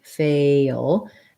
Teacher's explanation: we have first syllable stress we want to have our tense a sound fail and then this l is a dark l so we